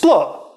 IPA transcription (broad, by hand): spl